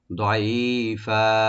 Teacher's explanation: দোয়াটাকে একটু ডিপ করে, আইনটাকে রাইট দিয়ে এক আলিফ টানবো, আর ফা দুই জবরওয়ালা আলিফে আমরা যখন আমরা থামবো, এখানে মাদ্দা আওয়াজ হয়ে যাবে, এক আলিফ টেনে আমরা ছেড়ে দেব, দাঈফা।